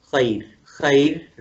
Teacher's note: را کو پتلا کر کے نیچے گرا کے آواز پڑھیں گے